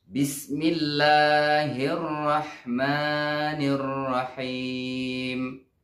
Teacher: Jadi tasydid pada huruf ro itu jelas dibaca.